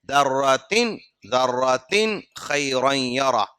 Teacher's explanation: ذَرَّةٍ خَيْرًا يَرَهُ، ذَرَّةٍ ہم نے اس سے پہلے کہا تھا کہ تنوین کے بعد اگر حروف حلقی آ جاتا ہے، خا حروف حلقی ہے، اگر وہ آ جاتا ہے تو وہاں پر اظہار کرنا ہوگا، مطلب ناک میں آواز کو چھپائے بغیر فوراً آگے بڑھنا ہوگا